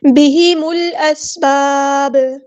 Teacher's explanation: میم کو لام کے ساتھ ملا دیں گے، حمزۃ الوصل ہمارا ڈراپ ہو جائے گا